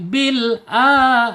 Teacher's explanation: lam secara makhraj itu ada di allisan ya ujung tepi lidahnya menyentuh langit-langit yang depan ya kemudian secara sifatnya di attawas tawasul Maksud ya antara tertahannya suara asyiddah dan mengalirnya suara arrakhah.